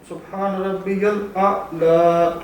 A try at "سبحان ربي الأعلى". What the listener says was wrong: نہیں, دونوں حمزہ ساؤنڈ کرنے. آئین میں نا, آئین کا مخرج کیا تھا, آ.